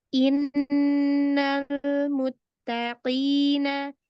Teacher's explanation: Lam sukun itu ada sifat namanya bainiyah, yaitu setengah mengalir